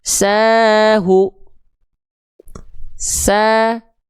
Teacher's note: Sa-nya dibaca 2 kali ayun karena 2 harokat dia. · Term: mad tabi'i